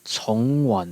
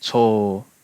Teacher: the mandarin and cantonese ng sounds at the end of a syllable tend to be japanese long vowels